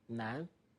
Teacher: You say nan, the last N is almost swallowed.